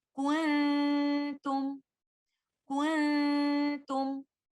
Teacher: So we should avoid touching the tip of the tongue with the roof of the mouth while giving ghunnah and we hold the ghunnah for some time and for letter ta the ghunnah of this ikhfa will be light